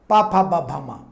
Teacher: ओष्ठ, इसमें चिपकाना पड़ता है ओठों को